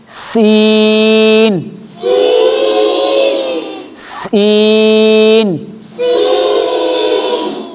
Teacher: اس سین میں تھوڑی سی سیٹی کی آواز آنی چاہیے